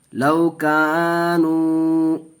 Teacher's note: ایک الف کھینچ کے پڑھیں گے اس لیے کہ واو ساکن سے پہلے پیش ہے، واو مدہ کا قاعدہ.